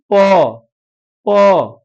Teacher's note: दंत हो नहीं सकता है कंठ हो नहीं सकता है और दोनों ओठ आपस में सट गए इसलिए इसका उच्चारण स्थान क्या हो जाएगा ओस्ट हो जाएगा